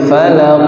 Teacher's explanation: Pangkalida itu huruf qof. Qof harus dipantulkan.